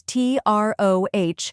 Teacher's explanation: troh, which rhymes with go and carries the main stress